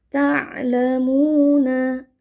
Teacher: Mu di sini dibaca panjang 2 harakat ya, karena ini bukan mad arid li sukun. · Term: mad tabi'i biasa